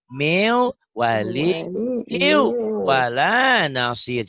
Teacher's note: dari meu nyambar ke wau, dari wau nyambar ke ya, dari ya nyambar ke wau.